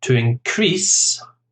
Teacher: to increase the stress on the second syllable is the verb